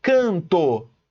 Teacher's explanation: Na palavra canto eu tenho um A e um N, só que na verdade eu só ouço o A nasalizado. Can, can, é o A nasalizado.